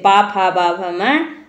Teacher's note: प फ ब भ म ओष्ठ से बोले जाते हैं